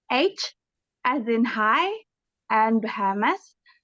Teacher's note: you're just exhaling a little bit harder than you would for a normal vowel sound in transition to the following vowel sound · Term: H sounds